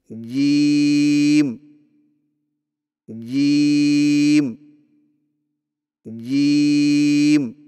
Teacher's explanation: جیم کی ادائیگی میں زبان کے درمیان کو تالو کے ساتھ سختی سے لگا کر باریک آواز میں پڑھیں، یعنی جیم جیم جیم۔